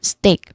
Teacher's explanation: The one I highlighted earlier that's a dip thong. It's a combination of two vowel sounds that glide together. So there is a dip thong on the first syllable.